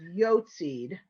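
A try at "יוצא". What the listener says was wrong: But you're adding. Right, you're adding a dalit at the end, so the aleph is yotzi.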